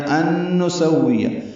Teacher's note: غنہ ہے، نون ساکن کے بعد پھر نون آیا